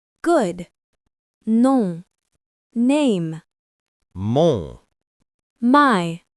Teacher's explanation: notice how we don't pronounce the N or M on the end. They just tell us to make the vowel before them nasal. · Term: nasal O sound